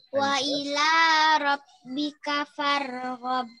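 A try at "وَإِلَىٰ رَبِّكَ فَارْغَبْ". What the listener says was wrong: Qalqalahnya, Nak. Terakhir, Nak. Wa ila, ulang sekali lagi qalqalahnya. Wa ila rabbika farghab. Oke, bacaannya sudah lancar, panjang pendek udah benar, dengungnya sudah ada oke. Cuma terakhir tadi qalqalahnya kurang terdengar pada ayat ke-8.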